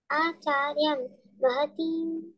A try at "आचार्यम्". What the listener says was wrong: आचार्यम्। That one is आचार्य, there is not a dot over it.